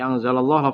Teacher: lafal Allah dibaca tebal atau tafkhim